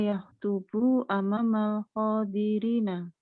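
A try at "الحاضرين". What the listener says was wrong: Ha, ya. Bukan kho ya.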